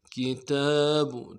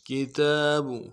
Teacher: تا کے اوپر کھڑا زبر ایک الف مقدار میں کھینچنا ہے